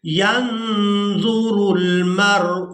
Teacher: اب یہاں نون ساکن پر اخفا کریں گے، آواز کو ناک میں چھپا کر ادا کریں گے